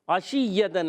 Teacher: عین حلق کے درمیان والے حصے سے ادا ہوتا ہے. شین وسط زبان وسط تالو سے ادا ہوتا ہے.